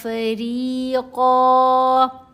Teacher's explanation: فریقاً میں جو نون کی آواز ہے اس کو ناک میں چھپائیں گے تو آواز بن جائے گی فریقاً تقتلون، قاف کے اوپر کلکلا کیا جائے گا، تقتلون وتأسرون فریقا، را کے نیچے زیر ہے، را کو باریک پڑھنا ہے، ساتھ یا ساکن ہے، یا مدہ ہے، را کی آواز کو 2 حرکات کی مقدار لمبا کرنا ہے